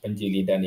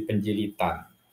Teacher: bukan D yang diucapkan, melainkan T